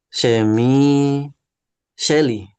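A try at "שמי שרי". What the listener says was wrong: Sherry. Ini bukan Lamet, ini res. Sherry, Sherry.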